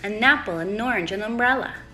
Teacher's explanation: the non-important words like a and an are said much more quietly and quickly and lower in Pitch this is important because an would usually be said quietly quickly